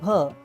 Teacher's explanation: भ उच्चारताना ओठांचा स्पर्श होतो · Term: ओष्ठ्य